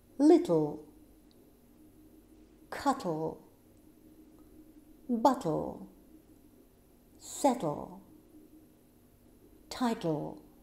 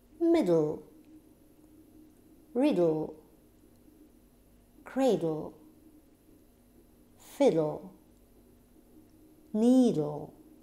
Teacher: Вы растягиваете губки, у вас во рту как будто происходит взрыв, поэтому это явление называется lateral plosion, латеральный взрыв. А воздух проходит сбоку.